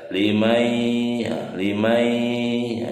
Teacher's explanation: Hukumnya adalah idgham biguna. Jadi langsung ya dimasukkan, nunnya tidak dibaca.